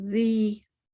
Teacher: ज़ी 2 हरकत में जबान दोनों दांतों के दरमियान